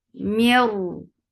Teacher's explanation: This is idgham without gunna. You are not giving a gunna sound in it.